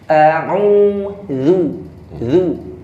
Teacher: Artinya pakai zal, pakai ujung lidah ketemu gigi atas.